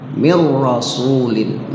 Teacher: Khusus ra dan lam atau lam dan ra, maka dia adalah bila gunnah, tanpa dilagukan. Artinya nggak boleh ada waktu di ra itu, nggak boleh berlama-lama di ra, nggak boleh digunnah bila gunnah. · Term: idgham bila gunnah